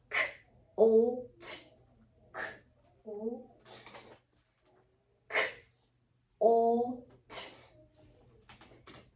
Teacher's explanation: We have an unvoiced back kicker. We have front curler o, and we have an unvoiced tongue tapper